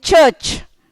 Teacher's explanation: A T and a sh sound becomes ch like in church